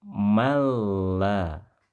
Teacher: Cara pembacaan seperti ini dalam ilmu tajwid, hukum bacaannya disebut idgham, yaitu menggabungkan dua huruf antara nun, sukun, dan lam menjadi satu. Ya, tertulisnya dua huruf, namun dibaca terdengar satu huruf saja.